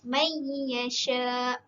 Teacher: nun mati bertemu dengan ya adalah idgham bi gunnah dan kita perlu mendengungkannya sebanyak 2 harakat